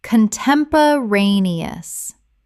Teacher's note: 6 syllables with the stress on the fourth.